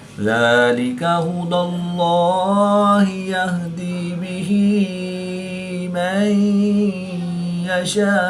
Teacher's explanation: نون ساکن کے بعد یا حروف یرملون میں سے ہے تو یہاں پر ادغام مع الغنہ ہوگا، یعنی غنہ کر کے پڑھیں گے۔